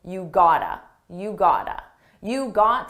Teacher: It's a combination of the words got to and it's pronounced as one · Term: reduction